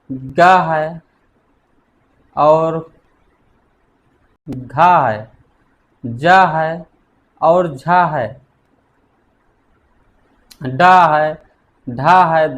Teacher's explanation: vocal cords कंपन करती हैं उन्हें हम घोष व्यंजन कहते हैं